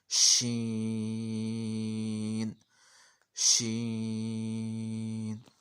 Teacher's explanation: जहाँ से हमने जीम को अदा करना है, यानी ज़बान का दरमियानी किनारा और ऊपर वाला तालू, ज़बान का दरमियानी हिस्सा और ऊपर वाले तालू से जीम अदा होना है, वहीं से शीन हमारा अदा हो जाना है।